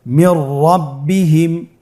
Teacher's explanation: নুন সাকিনের পরে র হরফটি এসেছে। নুন সাকিনের পরে যদি র হরফ আসে তাহলে নুন সাকিনকে পরবর্তী হরফের সাথে মিলিয়ে গুন্না ছাড়া পড়তে হবে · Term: ইদগামে বিলা গুন্না